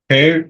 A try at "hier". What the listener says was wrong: No. Hier. La H no se pronuncia. Hier.